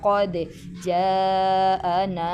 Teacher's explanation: double آواز آ رہی ہے، قلقلہ ہو گیا